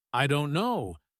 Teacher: the stress is on don't, not on I or no